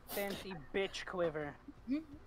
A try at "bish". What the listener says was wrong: You're saying it with a hard T.